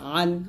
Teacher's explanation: আইন হলকের মাঝখান হতে গলা চেপে হবে অর্থাৎ চাপ দিয়ে এখানে উচ্চারণ করতে হবে আইন জবর আইন জের